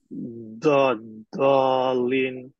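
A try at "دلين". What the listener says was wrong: তোমার জিব কি দাঁতে লাগছে? সামনের দাঁতে লাগছে নাকি? সামনের দাঁত, সামনের দাঁতে লাগা যাবে না, পাশের দাঁতে লাগাও, দুই সাইডের দাঁতে লাগাও। দলিন দলিন, দুই পাশের দাঁতে লাগাও, সামনের দাঁতে না।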